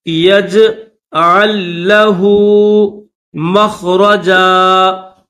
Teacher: یہ جو لام ہے جس کے اوپر جزم ہے اس لام کو نہیں پڑھا جائے گا